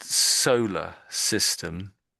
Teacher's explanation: the AR on the end is just really making that schwa sound